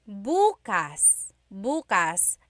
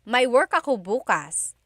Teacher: If you say bukas, bukas, emphasis is on the first syllable, that means tomorrow.